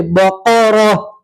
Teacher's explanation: اب گولتا کے اوپر وقف کریں گے تو گولتا کو ہا سے بدلیں گے اور ہا کے اوپر جزم میں پڑھیں گے